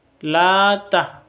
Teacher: la ini panjang, dua ketuk karena ada fathah berdiri